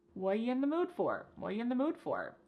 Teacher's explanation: The word are is gone. And the word you has been reduced to y. So when we link together what and you, it's super fast.